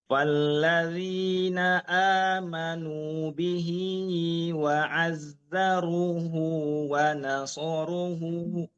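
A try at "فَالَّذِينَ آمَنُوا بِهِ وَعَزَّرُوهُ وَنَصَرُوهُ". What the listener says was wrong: Oh, di runya yang panjang bukan hunya ya. Coba lagi dari falladzi.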